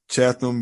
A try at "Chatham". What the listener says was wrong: Chatham, without the H. H is silent.